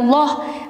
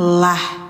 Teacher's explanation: ini bacanya lah teman-teman ya, enggak loh, karena didahuluinya kasroh ya, maka bacanya ditipiskan lah.